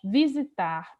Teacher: perceba que o tar é a sílaba mais forte. O vi e o zi são o que nós classificamos como sílabas átonas, as sílabas fracas. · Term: sílaba tônica